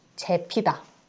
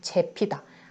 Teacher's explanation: 그래서 재피다. 아가 이 만나서 애로 발음되는 거. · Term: 이모음 역행동화